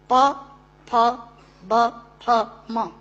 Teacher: दोनों होंठ मिलाकर बोले जा सकते हैं। अगर दोनों होंठ में से एक होंठ नहीं है तो आप प नहीं बोल सकते, ब नहीं बोल सकते, भ नहीं बोल सकते, म नहीं बोल सकते। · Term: ओष्ठांग